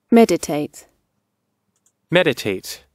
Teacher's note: Обратите внимание, что ударение стоит на первом слоге.